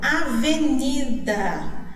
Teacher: Onde que está a sílaba forte da palavra avenida? Isso mesmo, está no ni, né?